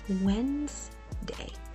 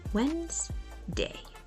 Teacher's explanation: the D is silent and the middle part is Blended into a single syllable wz the second syllable day on the other hand is short